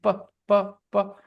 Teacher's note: when you say C okay when you make this sound C then your vocal cords don't vibrate your vocal cords are very silent they are widely open and the air passes through your vocal cords without any disturbance